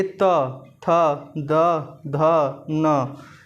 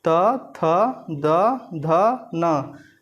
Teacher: जब आप उच्चारित करेंगे त, थ, द, ध, न, यानी इसमें क्या है, त वर्ग के जो पांचों वर्ण हैं, त वर्ग के जो पांचों वर्ण हैं त, थ, द, ध, न, आप स्वतः महसूस करेंगे कि हमारी जिह्वा जो है वो हमारे दांत को स्पर्श करती हुई इन वर्णों का उच्चारण कर रही है